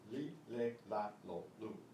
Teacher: for Spanish the bulk of the tongue is held higher in the mouth and is pushed more toward the front of the mouth. So pronounce the Spanish L by putting the middle of your tongue against your upper teeth and gums.